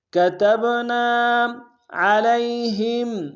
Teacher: عین کو گہرائی سے ادا کریں گے، لام کو یا کے سامنے لائیں گے، یا لین بغیر کھینچے پڑیں گے